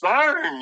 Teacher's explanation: Usually, it shows up when people are pronouncing your or their pronouns like that, they'll add an N to the end of the word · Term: intrusive N